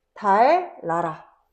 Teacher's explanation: 뒷말에 니은이 리을로 바뀐대